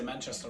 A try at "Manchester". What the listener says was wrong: Manchester. Is that like, isn't that how Americans pronounce words? They emphasize the second syllable. I think you've become Americanized.